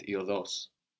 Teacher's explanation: with the accent on the end